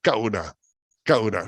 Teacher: suena como si fuera corta como si fuera corta Este pero no es corta sino que ha sido recortada recortada porque le sigue un Saltillo